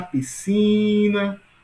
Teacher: Sílaba mais longa, si. Portanto, a sílaba mais forte aqui é si.